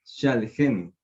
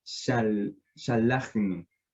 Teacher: en la última consonante del shoresh, que es la het, una se pronuncia con la e y la otra se pronuncia sin que se vocalice la vocal, es decir, con una shoa.